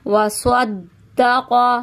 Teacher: سین کی آواز نہیں آنی چاہیے، یہاں پہ سواد کی آواز آنی چاہیے